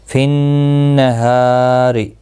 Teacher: نون مشدد پر غنہ ہوگا، ہا الف مدہ ہے، ایک الف کی مقدار کے برابر کھینچ کر پڑھا جائے گا، روزیر کی وجہ سے باریک پڑھا جائے گا.